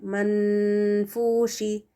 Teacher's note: نون ساکن کے بعد فا ہے تو ہم یہاں پر نون کا غنہ دیں گے 2 کاؤنٹس تک کا، تو نون کی آواز کو لمبا کرنا ہے